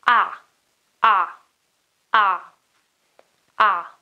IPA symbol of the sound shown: a